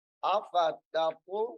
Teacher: پہلی تا کو باریک، دوسری قا کو موٹا